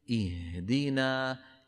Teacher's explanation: بنعطي الهاء حقها من من الرخاوة، ولا نبعد الوترين الصوتيين في الحلق عن بعضهما جدا، مثل حرف في.